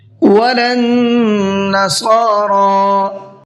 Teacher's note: وَلَا النَّصَارَىٰ، نون کے اندر غنہ کریں گے، اس لیے کہ نون کے اوپر تشدید ہے، اور صاد کو پر کر کے بھی پڑھنا ہے اور ساتھ ساتھ کھینچ کر کے بھی پڑھنا ہے، اور را کو بھی کھینچنا ہے۔